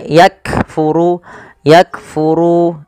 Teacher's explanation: bacaan syiddahnya dulu, yaitu kaf itu ditahan suaranya ak, baru dikasih hamas. Hamas itu mengalirnya nafas, maka yakfuru yakfuru. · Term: sifat syiddah dan sifat hamas